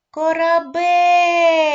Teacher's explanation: слово Корабель поділяється на три склади третій склад Бель наголошений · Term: наголошеним